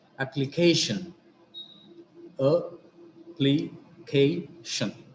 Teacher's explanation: Here also, shan is the ultimate syllable, K is the penultimate syllable. So we have given the accent to the penultimate syllable.